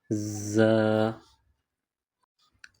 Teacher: ز، اس حرف کی ادائیگی میں دونوں دانت ملائیں گے ز، سختی کے ساتھ دونوں دانت ملائیں گے اور سیٹی کی آواز پیدا کریں گے